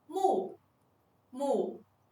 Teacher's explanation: Its initial is 'm' And its final is 'u' Its tone is the fourth tone